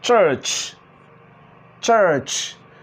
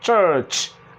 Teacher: this is voiceless where you observe some kind of little vibration or even none at all in your vocal cord and this is voiced where you see or when you produce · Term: affricates